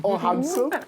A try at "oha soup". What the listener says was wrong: It's not oham soup. It's oha soup.